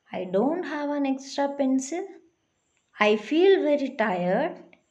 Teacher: when we give an answer to a question, our voice falls at the end, usually at the last word, that is a falling tone